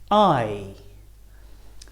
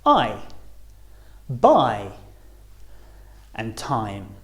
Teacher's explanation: So our mouths start wide open and closes as we say the sound.